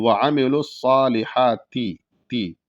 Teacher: اپنی زبان کو اوپر کی جو دانت ہے اس کے کنارے پر لگائیں تو باریک ادا ہو جائے گا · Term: تا